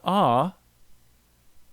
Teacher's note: tongue is small so that second resonance is really high then when I go to AH the first resonance moves up the second resonance comes down they're close to each other